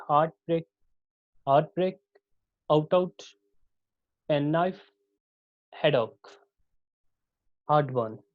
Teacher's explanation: स्पॉन्डाइक pattern, all syllable have equal stress. जितने भी syllable होंगे उनकी स्ट्रेस इक्वल होगी